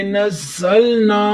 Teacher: آگے الف مدہ ہے، الف خالی، اس سے پہلے زبر، تو ایک الف کی مقدار کھینچ کر پڑھیں گے